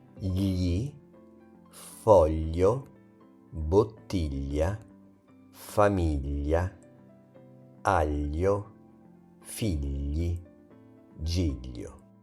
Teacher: When GL is followed by E, English I, it sounds similar to the LLI in the English word million, or even better, the Spanish LL in calle. It's soft, flowing, and slightly palatal. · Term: GL sound, Italian GL sound